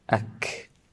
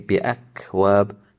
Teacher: So there should be a slight flow of a when pronouncing the kaf. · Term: hams